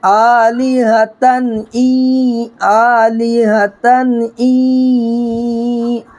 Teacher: حلقی کے 6 حرفوں میں سے کوئی حرف آ جائے تو یہاں پر نون کی آواز کو ظاہر کر کے جلد ادا کرنا ہے۔